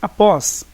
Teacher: então realmente ela é uma oxítona, porque a sílaba tônica é a última. E a oxítona ocorre quando a última sílaba de uma palavra é a tônica, como neste caso.